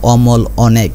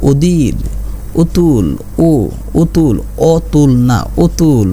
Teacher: বিবৃত বা স্বাভাবিক মানে অরে আমরা অ বলবো, অমল অনেক। আর সংবৃত এটাকে আমরা উ এর মতো বলবো